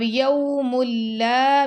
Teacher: میم کو لام سے ملا دیا